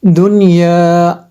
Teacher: غنہ نہیں کرنا ہے، اظہار مطلق کرنا ہے۔ یہاں پہ اظہار مطلق ہوگا تو یہاں پہ غنہ نہیں کرنا ہے جی۔